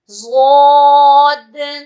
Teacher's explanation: آواز کے پھیلاؤ کے ساتھ اور ہیوی ایک ساؤنڈ میں موٹا کر کے اس کو پڑھا جاتا ہے